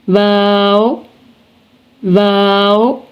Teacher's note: वाव वाव, दोनों होंठों को गोल करके ना तमाम मिलाने से वाव को अदा करते वक्त दोनों होंठ गोल हो जाएंगे और आपस में बिल्कुल चिपक नहीं जाएंगे। ना तमाम मिलाने से मुराद ये है कि दोनों होंठ आपस में गोल हो जाएंगे।